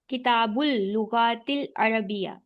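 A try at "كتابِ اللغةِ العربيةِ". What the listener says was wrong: باقی نیچے زیر ہے نا، کتاب اللغت العربیتی۔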